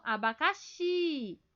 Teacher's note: O xi é mais forte, então é a última sílaba, então é uma oxítona.